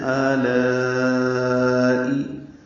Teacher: یہ تو حرکات لمبا ہے کھڑا زبر ہونے کی وجہ سے. لا الف مدہ ہے اور اس کے بعد حمزہ آنے کی وجہ سے مد متصل ہے